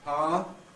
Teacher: Well, this sequence of events applies equally to ow before another vowel, so that power, the ow can lose its second element, giving us power, and that can then compress into a single syllable, pa, pa.